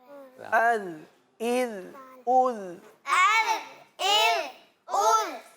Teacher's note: زبان کی نوک اوپر کے دانتوں کے پیچھے والے حصے پہ لگتی ہے.